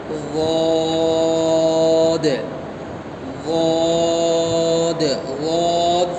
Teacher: زبان کی کروٹ. غاد جو ہے زبان کا ایک طرف کا حصہ اور اوپر کی داڑھوں کی جڑ. داڑھ جو ہے دانت کا آخری حصے کو کہتے ہیں.